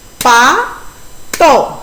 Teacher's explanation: ¿Cuál es la sílaba que se pronuncia con mayor intensidad de voz? La sílaba pa. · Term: sílaba tónica